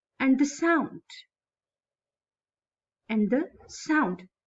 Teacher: Now the main word is here on third number, sound. So first 2 syllables are unstressed and third one is stressed.